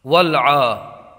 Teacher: آئیے اجرا قواعد کر لیتے ہیں۔ والعا، یہ عین کو ایک الف کھینچ کر کے پڑھیں گے، اس لیے کہ عین کے اوپر کھڑا زبر ہے اور کھڑا زبر حروف مدہ کے قائم مقام ہوتا ہے۔